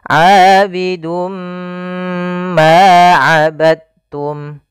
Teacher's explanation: Pada lafal ma di sini ada hukum tajwid berupa mad tabi'i, yaitu ditandai dengan adanya fathah bertemu huruf alif. Panjangnya adalah 2 harokat untuk lafal ma. Kemudian pada lafal abadtum di sini ada idgham mutajanisain.